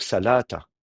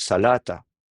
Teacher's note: un aleph qui est censé fermer une syllabe, et ben en fait, il ferme rien du tout. Il tombe, il s'affaiblit. Il y a ce qu'on appelle un amuissement du aleph.